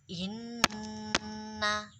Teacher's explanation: Nah, nya itu di sini ada 2 ketukan. Dihitung 2 ketukan ketika sudah masuk di dalam dengungan.